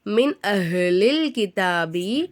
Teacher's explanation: நூனே சாக்கினுக்கு அடுத்து தான் அலிஃப் வந்திருக்கு அலிஃப் வந்து இல்ஹாரு உடைய எழுத்து அப்ப நம்ம என்ன செய்யணும் நூனே சாக்கினை வெளிப்படுத்தி உச்சரிக்கணும்